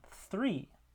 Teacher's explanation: So that is a voiceless interdental fricative in three.